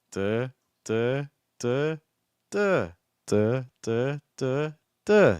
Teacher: you have a pitch and it just kind of goes up up up up. And also intonationally it's kind of doing a rising intonation like or maybe like a fall rise like duh duh duh.